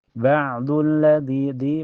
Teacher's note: Ba'dulladzi di mad thaobi'i. Karena ada ya sukun sebelumnya harakat kasrah. Jadi dibaca panjang dua harakat.